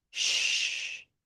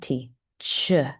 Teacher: with sh, notice your tongue is not going to touch anything in your mouth